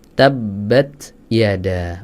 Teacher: Kalau yang tepat itu tidak sampai keluar huruf sin.